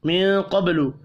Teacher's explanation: نون ساکن کے بعد قاف ہے، اخفاء حقیقی ہوگا. قاف پر پڑھا جائے گا، با ساکن پر قلقلہ کریں گے.